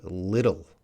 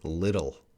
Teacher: I don't think little, that sounds more British maybe, but American, the TT is going to sound like DD.